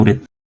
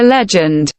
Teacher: The d sound in the word murid is less aspirated compared to the d sound in legend.